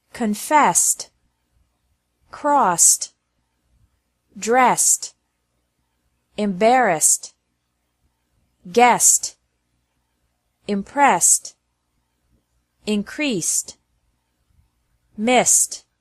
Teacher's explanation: e d is also pronounced like T after verbs ending with an S sound